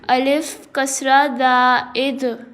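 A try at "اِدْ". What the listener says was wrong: Remember, dal has kalkla. You have to produce kalkla sound or echo sound in dal when dal has sukoon sign. Alif kasra dal id.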